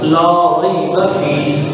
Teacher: را یہاں پہ موٹا پڑھا جائے گا کیونکہ اس میں زبر ہے